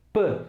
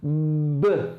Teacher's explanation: Então, olhando para o conjunto todo, eu digo que essa é uma consoante oclusiva bilabial surda, né? Então é um som que você fecha a boca, usa o lábio superior e o inferior, e você não sonoriza quando você começa a produzir o som dessa letra. Você não sonoriza. · É você pôr voz antes mesmo de começar a produzir o som. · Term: sonorizando